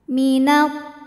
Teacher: ada Ya Sukun didahului harakat kasrah maka huruf tho panjang dua harakat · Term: Mad Thobi'i